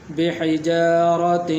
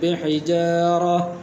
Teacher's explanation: تو یہ تا جو ہے ہا کے اندر تبدیل ہو جائے گی